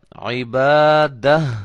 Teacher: آخر میں ہا کی آواز جو ہے وہ محسوس ہو، پیدا ہو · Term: وقف